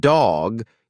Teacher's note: with the voiced ones like dog you'll feel a vibration when you say the D put your fingers lightly on your throat as you say it